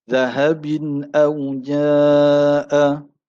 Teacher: Kemudian pada ayat yang ke-53 juga, selepas pada aswiratum min, zahabin au jaa. Tanwin berjumpa dengan huruf hamzah atau alif, hukumnya izhar halqi tanpa dengung.